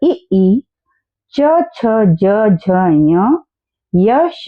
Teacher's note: ये सारे के सारे तालव्य वर्ण होते हैं, तालु से बोले जाते हैं।